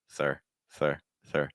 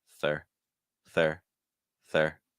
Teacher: my tongue pressed again against my top front tooth for the TH, and then it drops